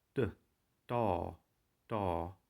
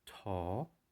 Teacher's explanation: Da is the unaspirated counterpart to ta.